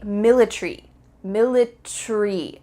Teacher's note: in british english they often cut out the a